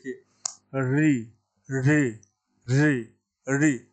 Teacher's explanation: जीवा जो है पीछे जाके यानी मुर्धा से और थोड़ा सा पीछे जाके मतलब मुर्धा वाले स्थान को टच करती है स्पर्श करती है इसलिए इस मुर्धा कहते हैं तो यह व्यवस्था है संस्कृत के · ऋ का उच्चारण हम मूर्धा से करते हैं इसलिए इस वर्ण का नाम हो गया मूर्धन्य मूर्धन्य मूर्धन्य का